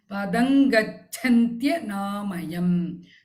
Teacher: Padam becomes padang, ing sound, anusura.